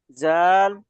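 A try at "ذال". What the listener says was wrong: জালের ক্ষেত্রে আর একটু পাতলা হবে, কোনো শব্দ হবে না।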